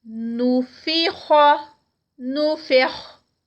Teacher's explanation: خا موٹا ادا کیا جائے گا